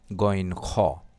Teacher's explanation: হলকের শেষ থেকে গইন খ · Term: হরফে হালকি